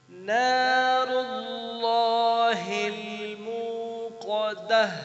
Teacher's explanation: اللہ لفظ جلالہ کو بولڈ پڑھنا ہے، منہ لمبا کریں گے تھوڑا سا